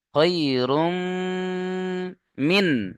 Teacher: ইদগামে ইয়ার মালুনের যে ইউ মিন রয়েছে, ইয়া ওয়াও মিম নুন, তার মধ্যে তানবিনের পরে এখানে মিম এসছে, তাই তানবিনকে মিমের সাথে মিলিয়ে একালিপ গুণা করে পড়তে হবে।